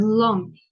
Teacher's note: That is a voiced consonant, and it's lateral. Lateral means that the air flows from two sides of the tongue, and it's alveolar. To show this, I'm gonna draw here that your tongue touches alveolar ridge right there, and from the sides your air needs to flow through there to make this sound.